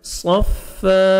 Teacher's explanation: फा को आपने 1 सेकंड खींचना है, सौत को मोटा करके पढ़ना है। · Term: अलिफ मद्दा